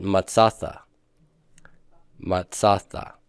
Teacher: Everywhere I would have gotten pathak, silent shava, I get long A and nothing.